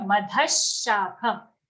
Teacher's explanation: After madha, there's a visarga. After the visarga, there's a sha sound, shakham. Okay, so for the visarga, we have to change it to sha